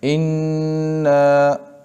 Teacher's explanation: اگر اِنَّا پر وقف کرنا ہے تو پھر اِنَّا ایک الف کی مقدار پڑھا جائے گا، ایک الف کی مقدار پڑھا جائے گا، اِنَّا، بس سانس رک گئی، اٹک گئی، بس اِنَّا ایک الف کی مقدار۔